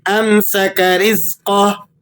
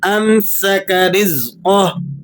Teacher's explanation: را کو آپ نے باریک پڑھنا ہے اور قاف کو آپ نے موٹا کر کے پڑھنا ہے